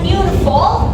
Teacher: It also has three syllables, but this time the first syllable is stressed or strong, and the next two are unstressed or soft. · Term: Dactyl